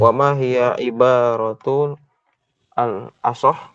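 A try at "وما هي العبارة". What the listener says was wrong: Baik, di situ ada alif lam ya, jadi harus dibaca juga. Wama hiyal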